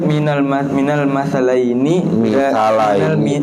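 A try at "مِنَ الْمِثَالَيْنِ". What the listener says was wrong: Harokatin ntar baca salah lagi di bawah mim kasroh.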